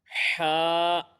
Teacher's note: یہ حلق کے درمیان والے حصے سے ادا ہوگا